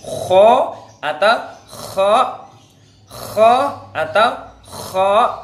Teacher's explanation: Sifatnya satu, nafas dilepas. Bahasa tajwidnya hamas atau hamsun. Suaranya dilepas, bahasa Arabnya rokhawah. Kemudian lidah kho ini lidahnya ingfitah, lidah renggang.